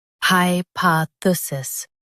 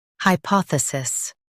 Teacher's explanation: Stress pa in US and poth in UK